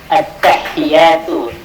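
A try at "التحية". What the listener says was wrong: Itu at-tahiyatu, at-tahiyya, at-tahiyyatu. Ya-nya jangan panjang. At-tahiyyatu. Ini ada tasydid di ta, at gitu ya. At-tahi. At-tahiyatu. Ya-nya jangan panjang. At-tahiyatu.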